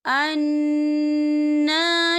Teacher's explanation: یہاں نون مشدد ہے تو یہاں پر غنہ ہوگا